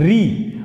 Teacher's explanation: अब री का उच्चारण स्थान है मूर्धा या मूर्धन्य वर्ण